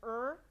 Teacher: the blade of the tongue is blocking airflow and airflow has to be diverted around the tongue for er